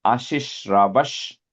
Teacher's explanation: You have a visarga there. Put a ish to join.